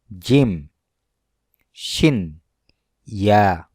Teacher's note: জিহ্বার মধ্যভাগ তালুর সাথে লাগিয়ে উচ্চারণ হয় জিম, শিন, ইয়া